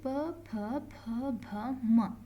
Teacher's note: ಇದಕ್ಕೆ ಓಷ್ಟಾಕ್ಷರಗಳು ಅಂತ ಹೇಳ್ತೀವಿ. ಓಷ್ಟಾಕ್ಷರಗಳು ಅಂತಂದರೆ ತುಟಿಯ ಸಹಾಯದಿಂದ ಇವುಗಳನ್ನು ನಾವು ಪ್ರನೌನ್ಸ್ ಮಾಡ್ತೀವಿ.